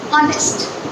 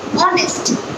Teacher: I have pronounced O sound. I have not pronounced H sound.